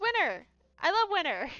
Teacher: Some people will pronounce the T, and other people's will just kind of skip over it entirely.